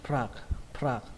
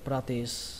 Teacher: Các bạn nhớ là âm sờ các bạn nhé, kết thúc bằng âm sờ, practice, practice. Ở đây trọng âm của từ này rơi vào âm đầu tiên, prag, prag, xuống giọng âm cuối, practice. Các bạn nhớ là pr, pr các bạn nhé, practice.